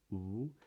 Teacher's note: In this accent, the lips are very rounded to begin with, something like this. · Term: W sound